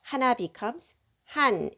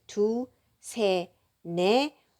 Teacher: we are dropping final consonant. So it becomes 두, 세, 네 when we use native numbers with any kind of counter.